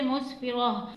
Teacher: آپ جہاں پر بھی اس طرح سے گولتا دیکھیں گے تو وہاں پر وقت میں ساکن ہو کر ہا بن جاتا ہے، وہ کس طرح سے، مسفرہ، تا کو وقت میں ہا میں بدل کر مسفرہ کر کے پڑھتے ہیں